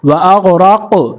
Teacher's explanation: را کو قاف کے ساتھ ملائیں گے اور قلقلہ بھی کریں گے کیونکہ قاف پر جزم ہے. را قاف زبر راق وَأَغْرَقْ نون الف مد زبر نا مد بھی کریں گے.